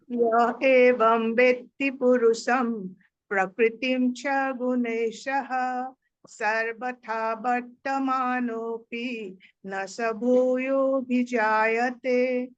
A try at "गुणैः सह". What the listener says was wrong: गुणे सह बोलिए तो, हिमाक्षी ने भी शह बोला, आपने भी शह बोला।